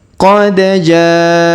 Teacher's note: huruf ja kita panjangkan lima harakat karena di atasnya terdapat tanda garis panjang